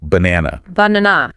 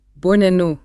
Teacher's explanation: We stress the middle syllable, right? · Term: schwa